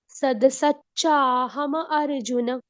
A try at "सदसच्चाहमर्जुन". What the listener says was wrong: माता जी सद नहीं बोलना, सद बोलेंगे द हलंत हो जाएगा, सद। सदसच्चाहमर्जुन। अर्जुन को अलग से नहीं बोलना है। म में क्या है?